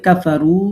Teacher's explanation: কাফারু, রুতে 3 আলিফ মাদ।